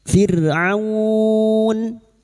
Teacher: fir'a sukun yang didahului kasrah dibaca tarkik atau tegis